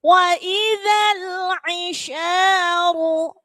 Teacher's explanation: ru tebalkan karena di situ ada ra tafkhim